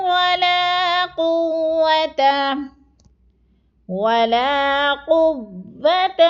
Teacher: قوة واو پہ شد ہے، سختی سے جمعوں کے ساتھ پڑھنا ہے